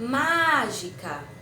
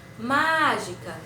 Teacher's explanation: a sílaba que se prolongou mais foi a primeira sílaba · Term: sílaba tônica